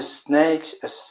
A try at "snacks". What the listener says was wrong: It would be snacks. So it's an ack at the end. Snacks. Yeah, much better than snakes.